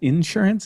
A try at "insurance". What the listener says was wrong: like emphasis on in it's insurance